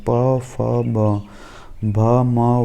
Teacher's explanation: इन अक्षरों के उच्चारण में दोनों होट का प्रयोग होता है · उच्चारण स्थान की दृष्टि से जैसे मुंह से बोलते हैं, उच्चरित स्वर करते हैं, उनको कहाँ कैसे रखा गया है। द्वि ओष्ठ, इन अक्षरों के उच्चारण में दोनों ओठ का प्रयोग होता है